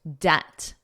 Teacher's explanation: Now notice the B is totally silent in the word debt. You don't hear it at all.